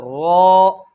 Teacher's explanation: اور 10واں مخرج تھا طرف لسان کی پشت اور دانتوں کے مسوڑے۔ طرف لسان کی پشت اور دانتوں کے مسوڑے، اس سے رو ادا ہوتا ہے